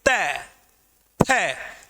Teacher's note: हमारी जीभ की आगे की नोक, जिह्वा का अग्रभाग ऊपर वाले दांतों के पीछे वाले जो मसूड़े हैं उनको टच करता है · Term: दंत्य व्यंजन